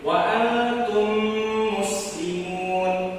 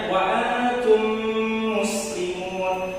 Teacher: Dapat apabila idgham mim ini mim sukun ini bertemu sesama mim. Nah, cara membacanya adalah menyuarakan mim rangkap atau ditasydidkan